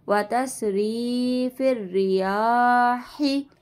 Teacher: व तस्रीफिर, फा को रा के साथ मिला देंगे।